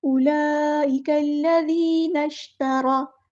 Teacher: تا باریک یاد رہے اور را پر موٹا ادا کرنا ہے